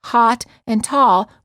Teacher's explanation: many Americans pronounce hot and tall with the same vowel sound. The o sound.